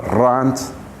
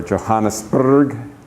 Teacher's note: uh we do pronounce them but we don't roll them here depending on where people come from you sometimes get a strong rolled R sound